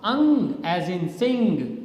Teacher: which is a nasal sound but your tongue is raised towards the soft palate